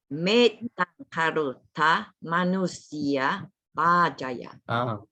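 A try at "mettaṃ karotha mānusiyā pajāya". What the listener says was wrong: Pajaya. Pajaya. Pajaya. This is correct. Pajaya. Not B. Not B. This is B. Bali. Here. Pajaya.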